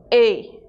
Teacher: o é em espanhol não é aberto